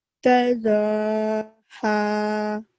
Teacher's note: ہا کو نرمی سے ادا کرتے ہیں، گلے سے ادا کرتے ہیں